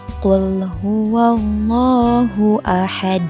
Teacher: Kalau huruf qaf itu tempat keluar hurufnya ada di pangkal lidah dan langit-langit mulut bagian belakang.